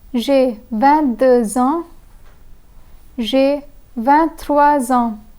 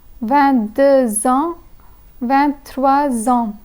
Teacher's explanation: In both the numbers, the liaison makes a z sound.